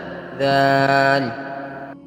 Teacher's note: دال کو ادا کرنے کے لیے زبان کی نوک کو سامنے کے اوپر کے 2 دانتوں کی نوک کے ساتھ لگائیں گے۔ دال کو نرم پڑھا جاتا ہے، دال۔